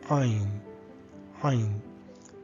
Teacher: Ain would be considered as soundless, no sound. However, it does have a guttural sound coming from the throats, like Ain. Ain.